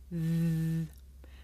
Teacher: The sound comes from between my tongue and my top teeth. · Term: voiced consonant